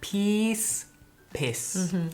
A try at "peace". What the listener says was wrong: Ya, el sonido es mucho más largo.